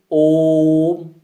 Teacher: लेकिन जब हम ओम का उच्चारण करते हैं, ओ की ध्वनि को थोड़ा लंबा खींचते हैं, जैसे ओम, तो यहाँ पर ओ के उच्चारण में दीर्घ स्वर से ज्यादा समय लगा, तो ज्यादा समय लगा तो यह प्लुत का उदाहरण है। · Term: प्लुत स्वर